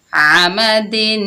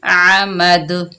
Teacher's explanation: جب وقف کریں گے تو دال کے نیچے جو 2 زیر ہیں یہ ختم ہو جائیں گے اور دال ساکن ہو جائے گی۔